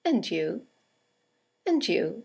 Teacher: and you is a statement it has a falling intonation and it's used to return the compliment or the greeting